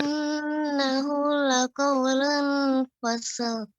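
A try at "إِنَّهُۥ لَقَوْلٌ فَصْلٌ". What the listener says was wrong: ya, lebih dipanjangkan lagi ikhfa'nya. Laqaulun fasl.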